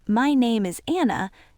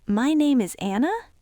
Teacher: Uptalk is when you accidentally use rising intonation at the end of a statement. Instead of your voice going down, it goes up. So instead of saying, "My name is Anna," you say, "My name is Anna?" When you push your pitch up at the end of a sentence like that, you are turning a statement of fact into a question.